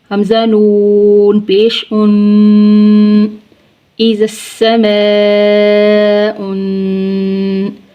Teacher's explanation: نون ساکن کے بعد حروف حلقی، حروف یرملون اور با میں سے کوئی حرف نہیں آ رہا تو یہاں پہ اخفا ہوگا